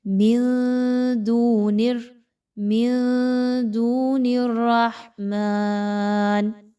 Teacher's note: نون ساکن کے بعد دال، اخفا کریں گے، ان کی آواز کو مخفی کریں گے